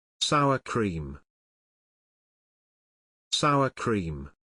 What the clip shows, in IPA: ˌsaʊə ˈkriːm